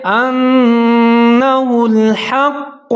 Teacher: انہ الحق حمزہ کے اوپر زبر ہے نون مشدد ہے جہاں ادغام کریں گے غنے کے ساتھ یعنی کہ آواز کو ناک میں لے جائیں گے